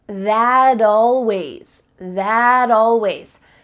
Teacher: done but it's often done when native speakers are talking quickly we link together words by making the final t change into a d